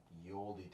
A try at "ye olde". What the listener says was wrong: Well, actually, the Y was pronounced like a TH. So it's the old.